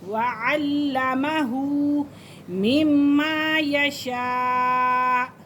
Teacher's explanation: بڑی مد کیونکہ حمزہ ایک ہی کلمے میں ہے